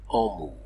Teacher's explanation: le M nasalise la voyelle qui précède